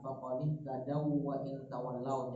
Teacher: waw ketemu waw tasdid wawnya waw kedua cukup di tasdidkan aja ya, tanpa ada dengung pemanjangan dengung ya